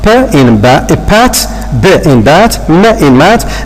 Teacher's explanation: Okay, this is what is meant by bilabial. The 2 lips are involved in the production of the bilabial sound